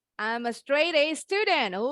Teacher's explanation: Sebelum T ada huruf hidup juga. Jadi T-nya bunyinya seperti D yang cepat. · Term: flap T sound